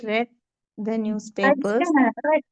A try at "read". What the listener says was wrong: റെഡ് എന്നുള്ളത് റീഡ് മതി, റീഡ് മതി.